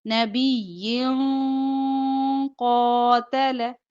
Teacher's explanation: 2 زیر کے بعد قاف آ رہا ہے تو اخفا ہوگا